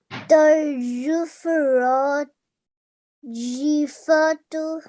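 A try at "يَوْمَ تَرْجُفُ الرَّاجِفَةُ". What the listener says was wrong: Okay, again, that was very nicely recited, but we have a tal marbuta here. Normally we would read it too, but because it's just before a stop sign, we will read it as a ha, and we will learn this rule very soon. Fah, jifah.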